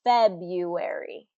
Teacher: that first syllable is going to get the stress or the emphasis